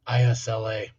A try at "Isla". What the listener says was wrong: No, I think the S is silent.